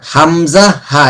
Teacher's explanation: হামজা আর আলিফ তো এক জায়গা থেকে, এটা হচ্ছে হলকের শুরু থেকে স্বাভাবিকভাবে বলতেছি হামজা, ওটা হয়ে গেল হামজার উচ্চারণ।